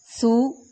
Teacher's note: سا کو نرمی سے ادا کریں گے، ایک الف کے برابر لمبا کریں گے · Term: واو مدہ